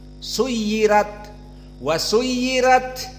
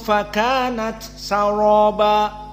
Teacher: Di suyirat tarqiq, suyirat, wasuyirat. Dan di ayat yang di akhir saraba dibaca tafkhim.